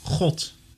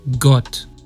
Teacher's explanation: the Dutch sound varies depending on the region but is a velar or uvular fricative